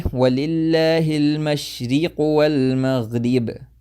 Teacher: the kasra is not a complete kasra. It's something between a kasra and a fatha, and it goes towards imala, a little bit towards imala.